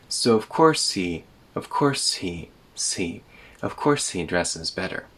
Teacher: There's a real h sound before e.